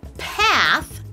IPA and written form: pæθ (path)